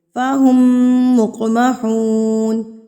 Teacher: قاف پر قلقلہ کریں گے کیونکہ قاف ساکن ہے